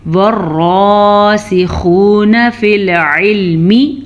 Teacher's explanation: خا کو پر پڑھیں گے، آپ کو معلوم ہے خا تو ہر حرف میں پر پڑھا جاتا ہے، کیسے؟ وَالرَّاسِخُونَ فِي الْعِلْمِ، عین کے مخرج کا دھیان رکھیے گا، یا اور الف کے اوپر کوئی حرکت نہیں ہے تو یا اور الف نہیں پڑھے جائیں گے۔